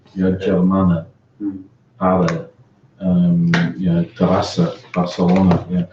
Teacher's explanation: the key thing in Catalan is that they have the neutral vowel. They have the schwa